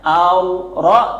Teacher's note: Ro sukun didahului fathah. Tebal bacanya. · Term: tafkhim